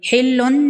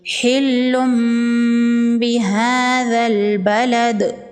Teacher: وَأَنْتَ، تنوین کے بعد با ہے اور یہاں پر چھوٹا میم ہے، یہاں پر اقلاب کا قاعدہ ہوگا، تنوین کو میم میں بدل کے پڑھیں گے اور غنہ کریں گے۔ حلن نہیں پڑھیں گے، حلم پڑھیں گے اور غنہ کریں گے۔